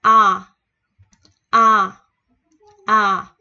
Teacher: Mình sẽ không đọc A như Việt Nam mà mình sẽ đọc từ trong cổ mình đưa ra. Mở miệng ra a a a nè.